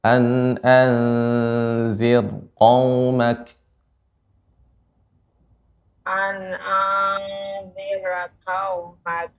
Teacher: an anzir tidak boleh tebal, nggak boleh an tidak, tipis saja dibuka mulutnya.